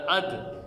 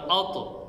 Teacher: تینوں کی ادائیگی زبان کی نوک سے ہو رہی ہے اور زبان کی نوک ثنایا علیہ جو سامنے کے دانت ہیں ان کی جڑوں کے ساتھ لگ رہی ہے